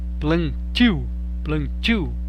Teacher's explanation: a vogal nasal não está na sílaba tônica plantio plantio percebeu todas têm vogal nasal mas não está na sílaba tônica